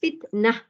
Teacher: Ta marbutah bila kita waqaf ataupun kita berhenti, dia tak bunyi ta dah.